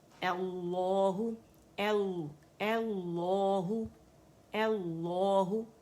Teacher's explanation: ہو موٹا ہو کر کے نہیں پڑھیں گے، ہو باریکی سے ہو، اور آرٹیفیشیل ہو بھی نہیں کریں گے، ٹھیک ہے، وہ بھی نہیں کرنا ہم نے، اللہ نارمل پڑھیں گے انشاءاللہ، ٹھیک ہے۔